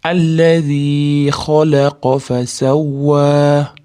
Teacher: xoyam qofam istilo, ya'ni yo'g'on harf, yo'g'onroq aytamiz